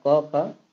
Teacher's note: क ख कंठ ध्वनियाँ हैं।